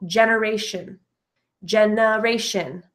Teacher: the second E in generation has the schwa sound